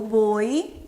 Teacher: o O é um pouco mais longo do que o I. Então, o O é uma vogal e o I é uma semivogal.